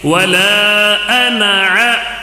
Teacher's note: ولا کو کھینچ کر پڑھنا ہے، ولا مد منفصل ہونے کی وجہ سے کھینچنا ہے